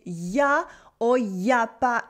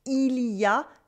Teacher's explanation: It is also very common in spoken French to say ya or ya pas instead of il y a, there is, and il n'y a pas, there isn't, il n'y a pas.